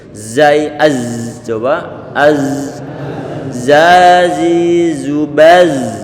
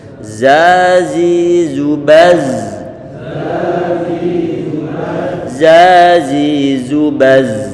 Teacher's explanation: sifat huruf zai itu adalah rikhawah, artinya dimungkinkan bagi huruf tersebut di saat diucapkan suaranya dibuat mengalir.